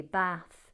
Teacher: So in the north they'll often use the short a vowel